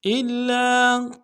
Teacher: لام کے اوپر تشدید زور دیں گے، لام کے ساتھ الف مدہ ایک الف میں کھینچیں گے